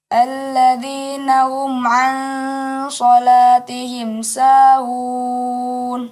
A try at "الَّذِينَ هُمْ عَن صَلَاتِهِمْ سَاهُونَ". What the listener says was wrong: Iya, tinggal lagi huruf H keluar dari pengucapan dan terasa di dada ketika pengucapannya. Alladzina hum. Ya, hum.